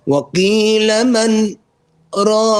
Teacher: So just small breakage in sound, and as soon as you've comfortably broke the sound, by holding the breath, continue. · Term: sakta